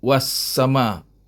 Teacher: Alif lam tak bunyi langsung, terus bunyi was-sama, itu makna idgham. Idgham mana bunyinya terus masuk kepada sin. Alif lam tak bunyi langsung. Ya. Itulah namanya syamsiah. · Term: idgham syamsiah